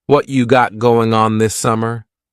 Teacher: What cha is what plus you. You becomes cha.